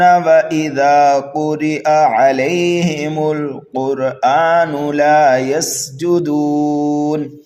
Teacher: مد عارض پایا جانے کی وجہ سے 1 2 3 الف کے برابر اس کو کھینچ کر کے پڑھا بھی جائے گا